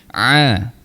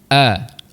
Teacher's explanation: Ain tengah rongga kerongkong. Kita tekan sikit. Aa cuba. >> Aa >> kalau hamzah kita lepas saja. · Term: huruf ain